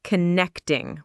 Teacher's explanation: The pronunciation of connecting is connecting with the stress on the second syllable